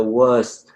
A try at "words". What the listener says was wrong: So for this one, I didn't hear the D. I heard words. So words. So you have to get all of those sounds in there.